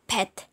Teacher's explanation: Contoh, coba ucapkan P dalam kata pet. Perhatikan bibir kita menutup lalu meletuskan udara. Ini disebut bunyi plosive bilabial.